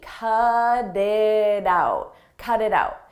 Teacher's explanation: In American English, when a T comes between vowels, we change that to a d, a very soft D.